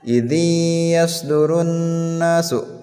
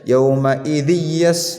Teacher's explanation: tidak dilangsungkan bacanya, melainkan harus digunnahkan ya, ditahan selama 2 harakat ya, 2 harakat. Seperti contoh yang tadi ketika nun mati, yang ini nun mati bertemu dengan ya.